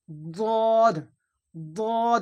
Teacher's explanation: জীবের কিনারা এবং তার বরাবর উপরের এই মাড়ির দাঁতের গোড়ার সাথে লাগিয়ে উচ্চারণ হয়।